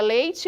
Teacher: esse ditongo presente em leite do mais forte pro mais fraco dizemos que é um ditongo decrescente